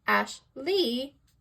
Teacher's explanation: In the name Ashley, Ash is stressed and Lee is unstressed